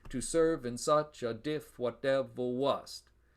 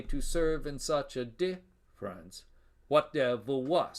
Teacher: the extra syllable, instead of coming at the end of the line, as it does with the feminine ending, comes in the middle of the line before a piece of internal punctuation. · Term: feminine caesura